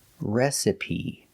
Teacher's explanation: the E at the end is pronounced with a long E, like green beans. Recipe. So the first syllable is a short E, like red and bed, re.